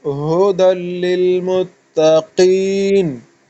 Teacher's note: जब काफ को पर स्ट्रेस करता है ना, उसको जरा मतलब मुंह भर के पड़ता है, सख्ती से पड़ता है, तो बंदे से ता भी सख्ती से पड़ जाती है, हालांकि वो नहीं करना है, ठीक है। तो काफ का असर जो है वो ता पे जाहिर नहीं होना चाहिए